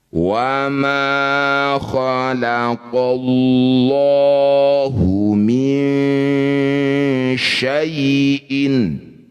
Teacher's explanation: lafaz Allah didahului fathah disebut lafaz Allah tafkhim atau tebal, ya. Lanya kita ganti jadi lo.